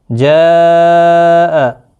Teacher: 3 سے 4 الف کے برابر کھینچ کر پڑھیں گے، مد متصل ہے۔ حروف مدہ کے بعد جب بھی حمزہ آتا ہے شکل میں تو وہاں پر بڑی مد یعنی مد متصل لگتی ہے۔